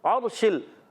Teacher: अर्शिल, रा साकिन से पहले ज़बर आ रहा है, रा पुर हो जाएगा, आइन की अदायगी हलक के दरमियान वाले हिस्से से